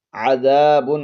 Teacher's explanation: عین کو حلق کے درمیان والے حصے سے ادا کریں گے